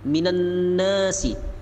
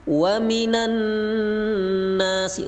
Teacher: gunnah dibaca 2 harokat